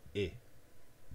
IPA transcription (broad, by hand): ɪ